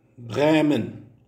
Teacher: le E de Bremen est un E long, très fermé